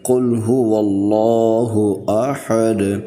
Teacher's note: قل هو اللہ احد، اور دال پر قلقلہ کریں گے۔ وقف کی صورت میں ہم نے دال کو ساکن کر دیا، اس لیے دال پر قلقلہ کرتے ہوئے پڑھیں گے